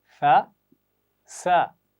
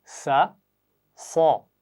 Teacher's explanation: दोनों सीटी वाली आवाज़ें हैं। शाबाश। लेकिन एक आवाज़ बारीक और एक मोटी है।